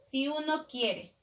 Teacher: la unión de la última vocal de la palabra con la primera de la siguiente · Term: sinalefa